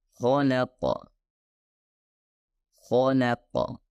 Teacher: Di mana kho dan qaf adalah huruf tebal dan lam harusnya lam tarakik atau lam tipis. Jadi sebaiknya beralih dari tebal ke tipis, kemudian ke tebal lagi.